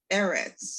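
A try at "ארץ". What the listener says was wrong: Look at your vowel. First vowel.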